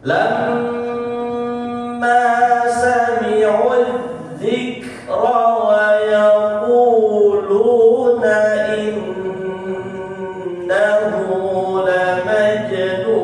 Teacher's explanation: Innahu, tasydid di atas nun ditahan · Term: nun bertasydid